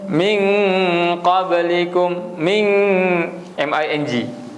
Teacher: Kita boleh terus kepada bunyi ming. Sebab lepas dia adalah qaf. Ming, cuma dengung dua harakat. Sebab dia ikhfa.